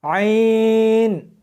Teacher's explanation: اس کو حلق میں سے سختی کے ساتھ نکالنا ہے